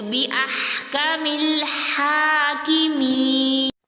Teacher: یا مدہ کا 2 کاؤنٹس کھینچ کر